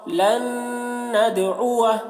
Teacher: نون دال زبر ند لن ند عین پیش عو لن ندعو واو زبر و لن ندعو دال میں قلقلہ بھی ہو رہا ہے